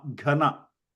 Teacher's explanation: the Na is the dental Na, Ghana